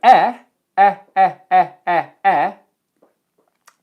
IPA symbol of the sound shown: eɪ